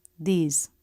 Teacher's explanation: But the voiced TH can be different. When it's in an unstressed, quick word like these or the tongue tip doesn't have to come through the teeth. It can press behind the teeth. Make sure the tongue isn't at the roof of the mouth or pointing down, but pressing right in the middle, where the teeth come together. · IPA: ð